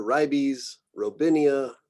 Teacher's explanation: I just think people are doing the English long I here.